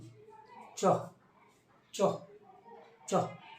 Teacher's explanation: চ বর্গের উচ্চারণ স্থান হচ্ছে তালব্য, অর্থাৎ এদের উচ্চারণ তালুতে দেখো, বলার চেষ্টা করো, চ চ চ, আমাদের জিভটা কি হচ্ছে, তালুতে গিয়ে স্পর্শ হচ্ছে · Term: তালুক ব্যঞ্জন